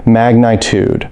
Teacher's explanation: stress on the first syllable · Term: word stress